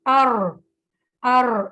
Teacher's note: اور را زبان کی نوک کی پشت کو اوپر کے سامنے والے 4 دانتوں کے مسوڑوں سے لگا کر را ادا ہوتا ہے ار. ار اس میں یہ تکرار کی آواز آئے گی تو اٹس مین آپ کی پروناؤنسیشن را کی ٹھیک ہے